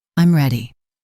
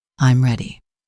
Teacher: Falling intonation for statements. I'm ready. Your voice goes down.